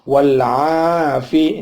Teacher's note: alnya al ta'rif, ya ketemu ain, namanya al qamariyah, maka alnya dibunyi al